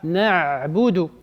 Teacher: Il faut faire ta'miq al-ayn, donc là, il faut l'approfondir l'ayn.